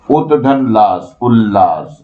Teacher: यदि त द के बाद ल रहे तो त द ल में बदल जाते हैं